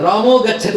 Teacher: ఇప్పుడు గ ముందు విసర్గ వచ్చింది అనుకోండి ఆ విసర్గ ఓ అయిపోతుంది